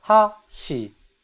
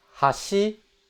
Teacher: So that's high to low. Hashi. Then you have hashi, low to high, which means bridge.